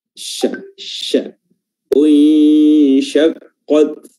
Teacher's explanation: makhraj huruf shin adalah wasatul lisan, pertengahan lidah bertemu dengan langit-langit atas ya, yang sejajar dengannya